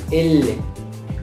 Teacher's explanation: pronunciar la L va a salir ligeramente por los laterales. L. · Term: consonantes laterales